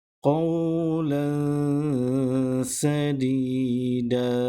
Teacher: tanwin berbaris 2 di atas bertemu dengan huruf sin, maka bacaannya perlu didengungkan dengan kadar 2 harakat